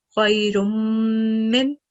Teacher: Prolong the sound for 2 seconds. Over here we have Mim Mushaddat. So again, prolong the sound for 2 seconds.